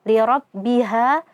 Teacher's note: Wa adzinat, ta sukun di sini sama seperti sebelumnya, li rabbiha, ada huruf alif maddiyah, sebelumnya ada huruf yang berharokat fathah, hukumnya mad tabi'i, mad asli dibaca 2 harokat saja